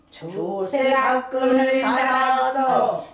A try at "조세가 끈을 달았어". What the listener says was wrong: 다가 그렇게 하지 말고 왜 이렇게 다를 거기다 힘을 줘. 조세가 끈을 달았어. 을이 길어. 을 달았어. 그래, 다리 세지 않아. 다리 약박이야. 약박. 긴 것이 강박이거든. 짧은 것이 약박이야. 그러니까 거기서 액센트 위치가 바뀌어. 조세 각근을 달았어. 조세 각근을 달았어.